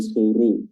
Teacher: Lalu selanjutnya ada huruf ra yang suru. Di sini ra-nya tebal karena berharakat dhammah